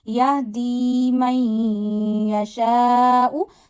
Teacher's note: When kasra come before ya sakina, we stretch ya up to one finger. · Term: ya madda